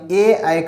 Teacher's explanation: ए ऐ का उच्चारण कंठ और तालु दोनों से होता है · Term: कंठ तालु